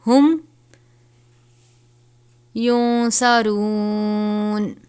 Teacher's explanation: نون ساکن ہے، اس کے بعد صاد ہے حرف اخفا میں سے، تو یہاں پر ہم اخفا کریں گے